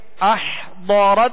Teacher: را تا زبر رت، احضرت. ضاد کو پر پڑھیں گے حروف مستعلیہ میں سے